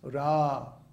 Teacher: the first A in Ram is long, so it's held for 2 beats